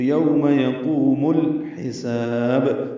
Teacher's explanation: یقوم الحساب، یا کو جلدی پڑھنا ہے، قاف کو پر پڑھنا ہے، لمبا کرنا ہے، یقوم. میم کو الحساب کے لام سے ملا دینا ہے